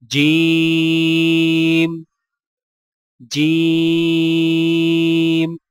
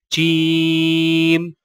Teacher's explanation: زبان کے درمیان کو تالو کے ساتھ سختی سے لگا کر باریک آواز میں پڑھیں · جیم کی ادائیگی میں چے کی آواز مکس نہ کریں، یعنی چیم، اور یہ صحیح نہیں۔